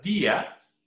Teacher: Y sería una vocal débil o vocal cerrada. La elevación de voz cae sobre la vocal débil I.